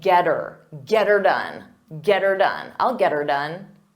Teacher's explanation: we change the word it to her but we pronounce it as ER so it will sound like get her get her done get